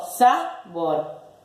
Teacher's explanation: Entonces, es una palabra aguda. La sílaba tónica es la última.